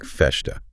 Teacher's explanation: in certain regions like Rio de Janeiro those S sounds become palatalized almost like a sh sound especially when they come before a consonant